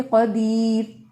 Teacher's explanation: اب یہ را ہم نے ساکن کر دیا اور اس سے ما قبل کیا ہے یا ساکن اور ما قبل کیا ہے زیر یعنی کسرہ، تو ڈیفینیٹ یہ را باریک ہے